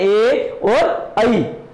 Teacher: कंठ तालव्य ध्वनियां, कंठ और तालु दोनों से निकलती है